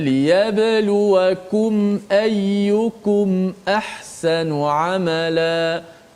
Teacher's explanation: Liyabluwakum, tu masuk izhar. Kemudian izhar syafawi ni kita tidak boleh memanjangkan gunnah, tidak boleh dipanjangkan gunnah